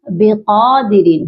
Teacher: قاف کو لمبا کریں گے، ایک الف کی مقدار اور موٹا بھی کریں گے